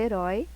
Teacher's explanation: nós pronunciamos o O com mais força do que o I. Então, aqui eu tenho um ditongo decrescente, porque ele começa do maior e vai para o menor.